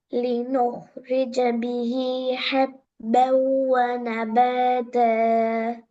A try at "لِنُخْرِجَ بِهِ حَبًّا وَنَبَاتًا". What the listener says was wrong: த sound போக கூடாது. وَنَبَاتَ த.